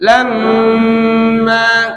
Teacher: setiap mim tasdid Nun tasdid paling gampang tinggal langsung gunah aja